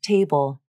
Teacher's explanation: You can't see the vibration, but since this word has the voiced B consonant, the vocal cords are vibrating as I say it.